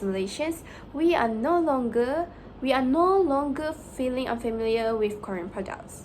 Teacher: She lengthened the word no to show that Korean is very well known among Malaysians. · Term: voice lengthening